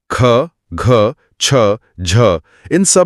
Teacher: ख, घ, छ, झ में हवा का एक स्पष्ट पफ है। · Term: महाप्राण